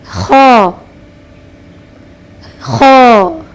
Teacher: خ خ خ کو صحیح اور مفخمہ یعنی موٹا ادا کرنے کا طریقہ یہ ہے کہ زبان کے آخری حصے کو اوپر کی طرف اٹھائیں اور آواز کو اس کے مخرج میں اوپر کی طرف اٹھائیں تو خ موٹا یعنی مفخمہ ادا ہوگا